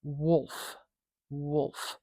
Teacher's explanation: It's called a velarized L, or a dark L, and that is letting the reader know that you're hearing that darkness when you say that ul sound, that throaty, thick sound in the back of the mouth